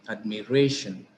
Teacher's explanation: The penultimate syllable is re here because shan is the ultimate syllable and the syllable that is preceding it is called penultimate syllable. So the stress will fall on the penultimate syllable, that is re,